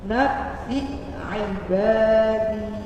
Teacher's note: Dalam bahasa Arab tuh nggak ada istilah nt, ainnya dibaca a, nggak ada. Maka cara bacanya di hamzahnya dulu dikeluarkan suaranya, kemudian ainnya dibaca.